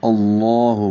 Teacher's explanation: اللہ حمزہ کو لام سے ملائیں گے، لام اسم جلالہ ہے. اللہ منہ بھر کر پڑھیں گے، موٹا پڑھیں گے لام اسم جلالہ کو. اللہ حق سے الگ سے، لام اسم جلالہ سے پہلے زبر ہو تو موٹا پڑھتے ہیں.